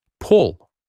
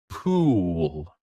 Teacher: Now, let's learn two more sounds that many learners say the same way, but they are different. The first sound is a short ooh like in the word pull. The second sound is a long ooh like in the word pool.